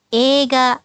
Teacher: Nah, minasang jangan mengucapkan eiga, tetapi ega. Jadi, i ini adalah bunyi panjang dari e. Jadi, ucapkan ega.